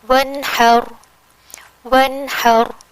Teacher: یہاں نون ساکن کے فوراً بعد ح ہے، اور ح ان 6 حروف حلقی کا ہی ایک لیٹر ہے، تو یہاں پر اظہار ہوگا ونحر، ونحر، بس، یعنی نون کا اظہار کیا اور کوئی ایکسٹرا غنہ نہیں دیا